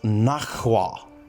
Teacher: k becomes adjacent to h sound and it is replaced by an aspirated k